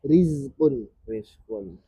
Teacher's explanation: Jadi za rokhawah harus ngalir terus